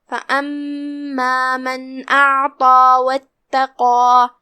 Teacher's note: यहाँ हर्फ क़ाफ है, क़ाफ हुरूफ तफ़ख़ीम में से है, लिहाजा उसे भारी आवाज़ में अदा करना है।